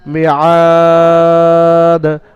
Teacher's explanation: আইন আলিফ জাবার 3 থেকে 4 আলিফ পরিমাণ টান দিয়ে দালের উপরে থামতে হবে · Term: মাদ্দে আরিজ আকফির কায়দা